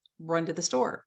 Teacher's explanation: we will stress those lexical or content words. So you can really hear run and store.